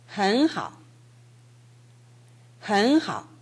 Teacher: H가 첫 음절인 경우에 그 앞에 발음이 N으로 끝나면 그 N이 NG로 되는 경향이 있습니다.